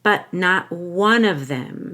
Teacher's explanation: I'm making sure that there's a held T on but and on not. You have to hold your breath there.